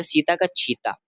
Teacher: और छत्तीसगढ़ ध्वनि में स का छ हो जाता है।